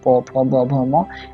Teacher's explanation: और उस समय क्या होता है कि जब भी हम प फ ब भ या म बोलते हैं तो हमारा दोनों होठ जो है वो बंद हो जाता है, और जब मुंह खुलता है तब ध्वनि का उच्चारण होता है, इसलिए पवर्ग को ओष्ठ्य व्यंजन भी कहा जाता है, ठीक है।